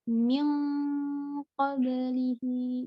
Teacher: nun sukun bersiap-siap melafalkan huruf qaf, maka ikutan tebal. Min di bagian nun sukun ketemu ko-nya itu tebal juga karena setelahnya huruf tebal.